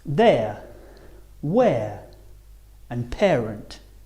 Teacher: starting on the E and finishing on the uh a